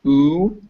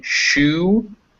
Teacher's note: a sound in the back of your mouth with your lips rounded.